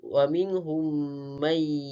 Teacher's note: Kemudian wa minhum may, di mana mim bertemu dengan mim, di mana hukum tajwidnya adalah idgham mislain. Cara bacaannya memasukkan bunyi mim ke dalam mim yang kedua yang berbaris beserta dengung.